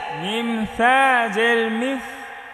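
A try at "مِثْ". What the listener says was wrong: এটা থা নরম করে পড়তে হবে, জিব্বার আগা দাঁতের আগা।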